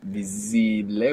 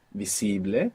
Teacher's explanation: You're not pronouncing that S as a Z, like in English, visible. Many people at home will find themselves doing this, putting that Z there from English and pronouncing visible.